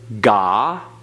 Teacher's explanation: That's the ah vowel, like in father.